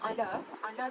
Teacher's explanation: Yang kedua, ala tu adalah mad asli sebab huruf lam berharakat fathah bertemu dengan alif dan setelahnya tidak bertemu hamzah, sukun, waqaf dan tasydid. Cara membacanya adalah dengan 2 harakat.